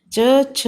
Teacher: इन letters को बोलते समय हमारी जीभ हमारे तालु को टच करती है, इसलिए इन्हें तालव्य व्यंजन भी कहा जाता है।